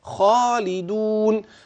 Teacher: الخاء معي في المرتبة الأولى لأنها مفتوحة وبعدها ألف